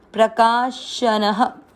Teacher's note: न में अ की मात्रा इसलिए विसर्ग को पढ़ेंगे ह